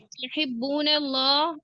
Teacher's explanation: तुहिब्बून अल्लाह इसमें छोटी हा की आवाज आई है बड़ी हा अदा नहीं हुई